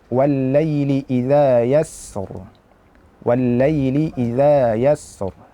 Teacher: Sin juga merupakan huruf arriikhawa Artinya kita sempurnakan aliran suara pada huruf tersebut